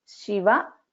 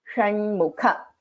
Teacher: In Shiva, it is Sha. This is a Talavya Sha. In Shanmukha, this is Sha. So this is Murdhanya Sha.